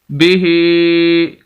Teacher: जिस लफ्ज़ के ऊपर नीचे आज उस लफ्ज़ को लंबा करके पढ़ते हैं, तो हा को हम इस वजह से लंबा कर रहे हैं कि इसके नीचे खड़ी ज़ेर है